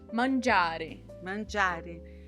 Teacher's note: a acentuação natural da palavra, ela tá no meio da palavra e não no final.